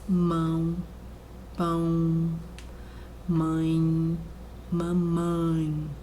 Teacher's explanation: O som também sai pelo nariz, por isso que se chama ditongo nasal.